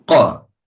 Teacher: Kita sebut tafkhim dan juga jahar dan syiddah. Kenapa sebut jahar dan syiddah juga? Sebab nak tahan, nak jaga nafas tertahan dan suara tertahan. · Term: tafkhim dan jahar dan syiddah